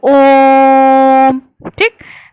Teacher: ह्रस्व स्वर से तीन गुना अधिक समय लगता है